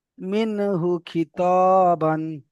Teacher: বিনা গুণায় জাহির করে তাড়াতাড়ি পড়তে হবে